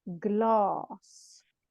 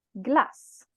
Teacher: the first one has just one s that means that the a is long a gloss the second one has double s double consonant that shortens the a to a glass